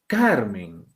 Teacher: Carmen, la mayor fuerza de voz está aquí, car. Palabra, aquí está la mayor fuerza de voz.